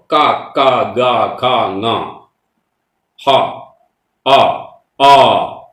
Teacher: ഇതൊക്കെ തൊണ്ടയുടെ ഉള്ളിൽ നിന്ന് വരുന്ന ശബ്ദങ്ങളാണ്